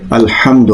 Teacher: یہ جو ہا ہے اس کو اپنی مخرج سے پڑھیں گے، مڈل آف دا تھروٹ یعنی حلق کے بیچ والا جو حصہ ہے وہاں سے ہا کو پڑھتے ہیں